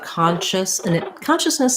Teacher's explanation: consciousness has first syllable stress so the letter o is going to say the ah sound